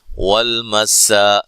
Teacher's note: سین کو باریک سیٹی سے